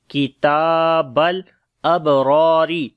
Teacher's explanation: Kaf we read in light sound, ta we long due to standing fatha on it